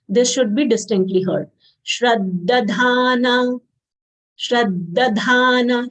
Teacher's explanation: Shra conjunct letter, half palatal sha, full ra, followed by half the and then full the. So we'll say shrad and then dadhana.